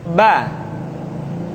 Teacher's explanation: dikeluarkan dengan cara merapatkan kedua bibir kita